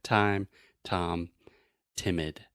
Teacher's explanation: the very front part of your tongue is touching the top of your mouth · in English to produce the true T sound we're using the tip of our tongue